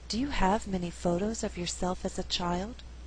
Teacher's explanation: In this example, I did not stress the word many. Many is a content word, but because we had too many stressed syllables together, there's a better flow if many is not stressed. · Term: alternate the stress